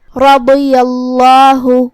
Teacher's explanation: لفظ الجلالہ کا حکم ہے تفخیم کیونکہ اس سے پہلے یا پہ زبر ہے تو ہم اسے بھاری آواز میں پڑھیں گے